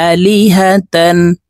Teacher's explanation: লাম জিরলি, হা জবর হা, আলিহা, তা দুই জবর তান, আলিহাতান। তানউইনের পরে ইজহারের হরফ হামজা আসছে, তো এই তাকে গুন্না ছাড়া স্পষ্ট করিয়া পড়ব।